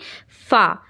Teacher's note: फा जब आप बोलेंगे तो आपको खुद ही महसूस होगा कि ऊपर वाले दांत आपके नीचे वाले होठ में लग रहे हैं और नीचे वाले होठ के अंदर साइड लग रहे हैं · ऊपर के दांतों के किनारे निचले होंठ के तर हिस्से से अदा होता है। ऊपर का जो हमारा दांत है उन दांतों का किनारा आपको नीचे के होंठ में रखना है और नीचे के होंठ के तर हिस्से में।